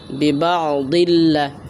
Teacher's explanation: দুই জের তারপর দেখেন লাম আসছে দুই জেরের নাম হলো তানবিন তানবিনের পরে লাম আসলে তানবিনটাকে লামের সাথে মিলাইয়া গুন্না সারা পড়বেন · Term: ইদগামে বালা গুন্না